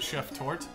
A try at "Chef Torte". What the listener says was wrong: Torte is would be with the accent on the e at the end.